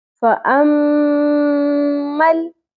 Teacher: آیت نمبر 15، فَأَمَّل، میم مشدد آ گیا، یہاں پہ ہم نے دیکھا تھا آیت نمبر 14 کے اندر نون مشدد تھا، ہم نے یہاں پر بھی غنہ کیا تھا، میم مشدد ہے، یہاں پر بھی غنہ کریں گے۔